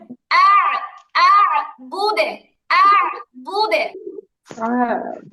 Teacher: বুদু হবে না গো, কারণ যখন ওয়াকফ করব তখন এটা সাকিন হবে, আর সাকিন হলে এটা কলকলা হবে, আর দালের কলকলা হবে জেরের মতো, পেশের মতো না